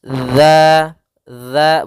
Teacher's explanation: makhraj huruf dalal yaitu ujung lidah menempel dengan gigi seri atas gigi seri atas sehingga pelafalannya dia dza dza bukan Za